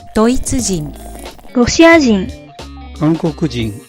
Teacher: Words ending with hito are often nakadaka. Words like this have a tendency with the first kana starting low and the word remaining high, but the hito part is low.